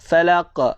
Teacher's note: Qa huruf qalqalah. Dia berada pada hujung ayat, maka qalqalah kubra.